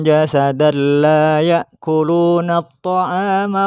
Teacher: ada ada contoh tanwin bertemu lam tanwin bertemu lam maka harus memasukkan suara tanwin kepada huruf setelahnya yaitu lam tanpa dengung tanpa gunah